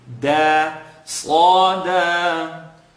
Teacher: So sad is heavy, second part of the tongue. Slaw, dal, tip of the tongue behind the top two teeth.